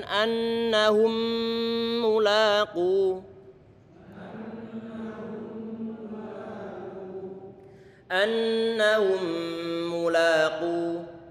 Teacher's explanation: Mem yang kedua didommahkan maka dimonyongkan. Mem pertama sukun maka datar.